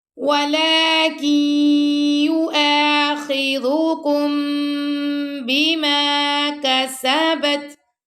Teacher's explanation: کاف کو ہم نے یا سے ملانا ہے. ٹھیک ہے. نون یہاں پہ اسکپ ہو رہا ہے، کاف زیر یا کی یا پیش یو.